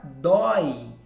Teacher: o O é pronunciado com mais força, né? Ele é chamado de vogal, e o I, que é um som um pouco mais fraco, seria ali a semivogal. Mas as duas vogais estão juntas, né? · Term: ditongo aberto